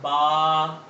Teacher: دونوں ہونٹوں کو آپس میں ملائیں گے تو با ادا ہوگا